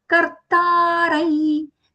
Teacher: the anuswara nasal ya sound because it is followed by the letter ya.